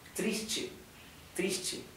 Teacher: Recuerden que la T con la E se pronuncia como si fuera CHE, che. Triste, triste, ¿bien?